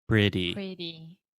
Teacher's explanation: just imagine the T sound as a d because it's a lot more similar to a d when we speak fast